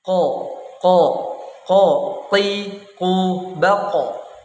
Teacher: qof merupakan huruf yang keluar dari bagian lidah paling dalam yaitu pangkal lidah dan langit-langit mulut yang berdaging huruf yang keluar dari lidah ini dinamakan dengan huruf alisan atau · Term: huruf Q